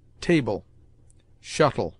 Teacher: pronounced like a weak E-L, in which the E is almost mute